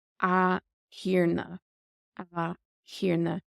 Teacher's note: the T becomes silent with the Séimhiú